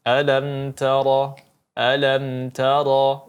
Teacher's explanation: mim mati bertemu ta sebagaimana kita ketahui izhar syafawi, maka harus kita jelaskan tanpa ada dengung di dalamnya. Alam tara, ya, tidak usah ditahan terlalu lama.